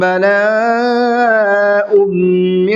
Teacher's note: تنوین کے بعد میں میم ہے تو غنہ کر کے پڑھیں گے